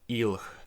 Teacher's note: after this velar fricative weakens to h and it becomes alhe then the word final vowel loss happens and we get a word final lh cluster so we get ilh which is really hard to say and